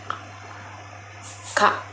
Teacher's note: dibentuk dengan menggunakan lidah dan langit-langit mulut serta menghasilkan suara yang tidak bersuara atau disebut letup perel.